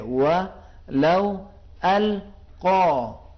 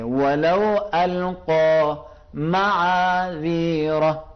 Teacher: زبان کی جڑ کو نرم تالو سے، کوے سے، اس جو زبان جو گوشت کا ٹکڑا لٹک رہا ہے اسے کوا کہتے ہیں، اس سے زور سے لگا کر ادا کریں گے